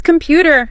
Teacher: Second syllable. Feel that little push.